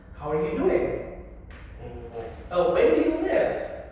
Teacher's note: Rising intonation for questions such as, how are you doing? Oh, where do you live? Right? It rises in the end.